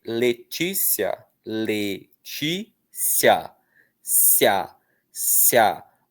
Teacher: Então, ó, quando a vogal mais fraca vem antes da vogal forte, como é o caso de Letícia, Letícia, cia, cia, o I, vogalzinha bem fraquinha, semivogal, veio antes do A, que é uma vogal forte, poderosa, bem pronunciada. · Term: ditongo de crescente